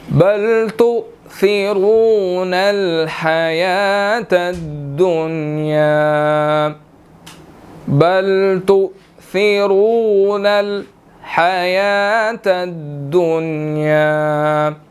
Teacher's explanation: تؤثرو حمزہ ساکن ہے، جھٹکا دے کر پڑھیں گے، اور آگے را کے اوپر پیش ہے اور آگے واو مدہ ہے، اس کو موٹا پڑھنا ہے اور تھوڑا سا 1 سیکنڈ کھینچ کر پڑھنا ہے کیونکہ واو مدہ ہے، تؤثرون، ٹھیک ہے جی۔